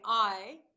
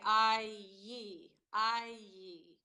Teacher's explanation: we have a connecting sound or a linking sound, the y